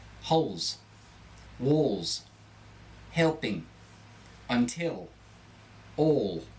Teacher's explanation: This is to help distinguish between Australian and a Cockney accent, which are rather similar. When you pronounce the final L, you distinguish yourself as an Australian speaker.